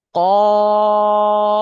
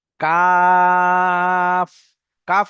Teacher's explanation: কাফ উচ্চারণ করার সময় ঠোট দুটো খুলে যাবে। আর কফ উচ্চারণ করার সময় ঠোট দুটো গোল হবে। এবং তিন আলিফ পরিমাণ টান হবে।